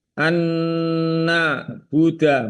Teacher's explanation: nun sukun bertemu dengan nun tasdid, itu hunah. Bacanya kurang lebih 3 harokat.